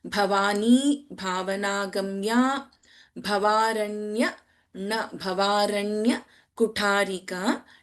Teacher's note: भ एंड भ in this line all the भा यू आर सीइंग आर महाप्राणक्षरास